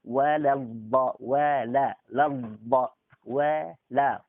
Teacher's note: Wawunya tipis. Lamnya juga tipis. Lam alif itu harus dibaca tipis. Karena alifnya nggak kebaca lagi.